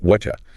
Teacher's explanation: The T sound at the end of what and the Y sound at the start of you, they merge. Through a process called assimilation. · That T plus Y combination creates a chi sound, so you get whatcha.